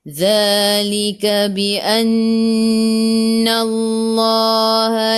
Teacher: Zadhi dhu, hujung lidah keluar pada gigi depan. Za dua harakat, ada alif kecil mad asli.